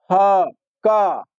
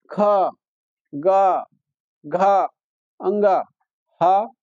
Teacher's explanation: ह कंठ से आई। ख, ग, घ, अंग, ह विसर्ग यह कहां से कंठ से उच्चारित होते हैं।